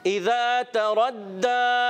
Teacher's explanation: तरद्दा में ता को बारीक रखेंगे, रा को पुर रखेंगे। प्यारे बच्चों जब कभी रा पर ज़बर पेश आए तो रा मोटा अदा करते हैं, क्या करते हैं, मोटा अदा करेंगे।